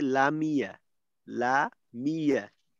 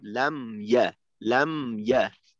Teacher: মিমের জজমটা অস্পষ্ট হওয়ার কারণে অনেকটা জেরের উচ্চারণ হয়ে যাবে। তখন লাম ইয়া এর পরিবর্তে লামিয়া লামিয়া, যেখানে কিনা মিমে ছিল জজম ওইখানে হয়ে যাবে অনেকটা জেরের উচ্চারণ।